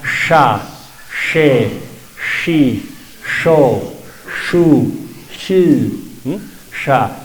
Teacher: la ch que se pronuncia de una manera muy similar a la sh del inglés sh la diferencia es que la lengua se recoge se se va para atrás y suena sha She shi sho